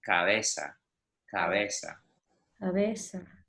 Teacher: Again, I almost don't pronounce the B.